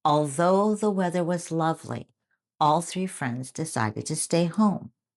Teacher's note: did you hear the voice th in although and the light L in lovely?